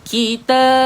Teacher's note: Matikan ba. Ada huruf qalqalah di situ.